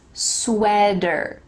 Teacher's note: in american english that t is going to change to a d